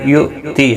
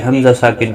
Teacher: یؤتی حمزہ ساکن کو جھٹکے کے ساتھ پڑھیں گے